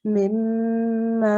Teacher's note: In order to give it a nasalization, we have to hold the meme for a little while. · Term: meme mushaddad